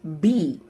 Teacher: bilabial, produced when your lips are pressed together on sounds like B.